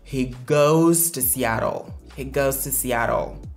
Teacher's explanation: Donc les verbes qui se terminent par O ne respectent pas la prononciation is à la troisième personne du singulier. Bien vrai qu'on écrit ES, mais on prononce ça comme le son Z.